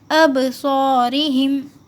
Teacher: صاد جو ہے وہ موٹا پڑھا جاتا ہے منہ بھر کے